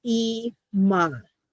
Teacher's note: We have our kamatz, ah, and then the aleph is silent.